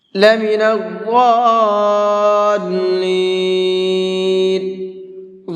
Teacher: ضاد کو منہ بھر کے بھی پڑھیں گے اور ساتھ ساتھ 4 سے 5 الف کی برابر کھینچ کر کے بھی پڑھیں گے، اس لیے کہ یہاں پر یہ بڑا مد ہے۔